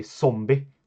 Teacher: you wouldn't pronounce zombie with a zed sound. you would say zombie with an s sound.